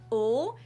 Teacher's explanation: Now in English there are two different L sounds, a dark L that is pronounced more in the back of your throat